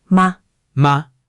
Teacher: Don't give it a pitch. Don't make it fall or rise. Just a quick puff. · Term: neutral tone